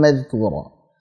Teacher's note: Ini mad iwad dibaca 2 harakat saja. Jangan madhkura kepanjangan atau madhkura kita tutup dengan hamzah, salah juga.